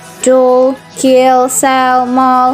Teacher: dark or heavy L occurs at the end of words such as dull, kill, sell, maul